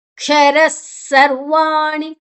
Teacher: ಕ್ಷರ ಸರ್ವಾಣಿ ಕ್ಷರ ಕ ಮತ್ತೆ ಶ 2 ಅಕ್ಷರ ಸೇರಿದೆ. ರ ಆದ ನಂತರ ವಿಸರ್ಗದ ಉಚ್ಚಾರಣೆ ಸ, ಮುಂದಿನ ಅಕ್ಷರ ಸ ಇದೆ, ಅದಕ್ಕಾಗಿ ಸ.